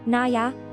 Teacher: a softer, more elongated na with a subtle y sound at the end